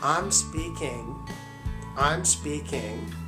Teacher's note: this G sound generally is not pronounced whenever we speak fast but if we are speaking slow we pronounce it this way